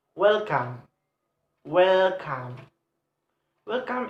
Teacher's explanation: welcome welcome is the have two syllable and the force and the stress is placed on first syllable